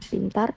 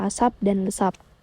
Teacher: Alasannya, P pada posisi awal diucapkan secara meletup atau polysive, sedangkan P di luar posisi awal itu akan diucapkan tidak dengan cara meletup atau implosive